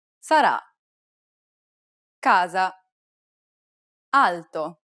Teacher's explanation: It's identical to the A sound in the word father, except that it's held for a little longer. Open your mouth wide and let the air pour out.